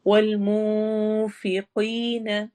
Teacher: نون پر کی آواز کو ہم چھپا کے پڑھیں گے، فقی قوف موٹا ہوگا اور ساتھ ہی یہ یا مدہ ہوگی۔